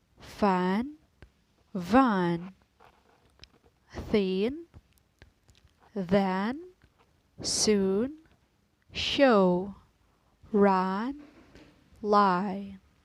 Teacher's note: a constricted area of the vocal tract when pronouncing continuous consonant the air is never completely blocked by any part of the vocal tract